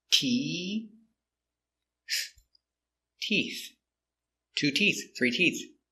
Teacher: start with a t sound with our tongue inside TT and we finish with the th with the tongue touching the teeth making the air